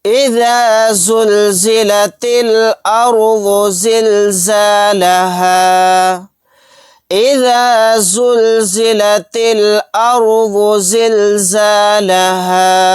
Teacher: اذا زلزلت الارض زلزالها، اذا زلزلت الارض زلزالها، یہاں پر تا کو لام ساکن کے ساتھ ملا دیں گے، یہ الف نہیں پڑھا جائے گا۔ رائے ساکنہ کو موٹا یعنی پر پڑھیں گے، کیونکہ رائے ساکنہ سے پہلے زبر ہے۔ اگر رائے ساکنہ سے پہلے زبر یا پیش ہو تو را موٹا پڑھا جاتا ہے، اور رائے ساکنہ سے پہلے زیر آ جائے تو را باریک پڑھا جاتا ہے۔